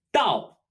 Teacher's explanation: pronounced similarly to knife but with a falling tone.